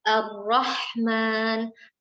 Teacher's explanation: Sedangkan pada makhraj ra kita menggunakan taraful lisan, menggunakan ujung lidah, akan tetapi disertai sedikit dari dhahrul lisan, dari bagian atas lidah kita, disertai takrir ya, sifat huruf ra ada getaran sedikit